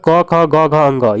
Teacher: इसका उच्चारण हम कहाँ से करते हैं इसको देखते हैं। तो क वर्ग का उच्चारण कंठ से होता है, क से कंठ, तो इसका उच्चारण कंठ से होता है।